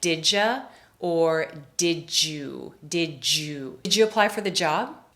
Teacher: The D at the end of did and the Y at the beginning of you make the J sound.